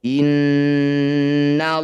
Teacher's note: disebut lafaz Allah tafkhim atau tebal lanya kita ganti jadi lo